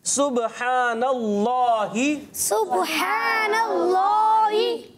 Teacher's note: इसमें जलालत अल्लाह पाक का नाम है, उससे पहले ज़बर भी आ रहा है। तो अब क्या करेंगे, अल्लाह पाक के नाम को क्या करेंगे, मोटा करेंगे।